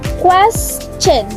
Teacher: So quest is rise, then chen is drop in intonation. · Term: rise in intonation